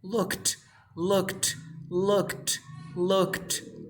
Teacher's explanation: so when you add Ed you pronounce this like T